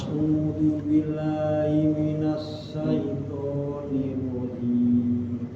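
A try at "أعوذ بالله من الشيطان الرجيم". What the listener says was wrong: Kemudian tadi ha masih ini ha-nya agak kegedean tadi, Pak. Agak kuat. Ya, coba agak sedikit ditipisin lagi, Pak. Sama tadi kalau ininya udah pas nih. Yang penekanan tadi iya sudah pas. Kena ini ainnya, kena itu aja.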